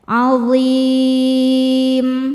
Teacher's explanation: Maka dha-nya panjang, boleh 2 atau 4 atau 6 harokat asal konsisten dalam sekali baca. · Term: mad arid li sukun